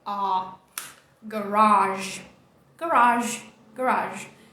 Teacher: Essa letra A redonda aqui no IPA não é o A do português, tá? É um A, que é uma mistura de A com O. A, garage.